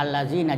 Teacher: Jadi lam pertama tidak dibaca, yang dibaca lam kedua allazina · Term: lam samsiyah